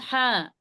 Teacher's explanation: حلق کی درمیان یعنی بیچ کے حصے سے بڑی ہا ادا ہوتی ہے. اسے ادا کرتے وقت آپ کے منہ سے ہوا باہر کی طرف آتی ہے.